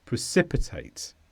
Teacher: It's a verb, and the stress is on si.